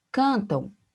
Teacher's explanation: eu tenho o M ali também formando, né, esse som como se tivesse um U semivocálico, um som de U ali no final da palavra